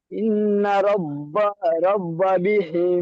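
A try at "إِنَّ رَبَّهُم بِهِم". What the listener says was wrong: রব্বা হুম বাজ যাচ্ছে, দেখেন আপনি এই রব্বা পর্যন্ত বলছেন, রব্বা, আর এই হুমটা তো বলতে হবে, হুম।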